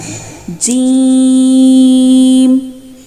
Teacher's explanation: زبان کے درمیان تالو سے لگا کر باریک آواز میں ادائیگی کی جاتی ہے